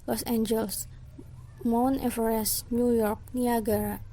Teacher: Nah ini stresnya itu kurang lebih sama, nggak ada yang paling ditekan gitu.